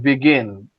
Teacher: Entonces, la pronunciación es begin. Tiene el acento en la I.